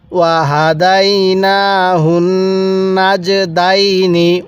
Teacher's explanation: নাকের বাসি দ্বারা গুন্নাহ করব। কারণ মিমে নুনে তাসদিদ হলে গুন্নাহ করা ওয়াজিব হয়ে যায়